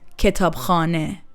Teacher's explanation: stress moves toward the khane part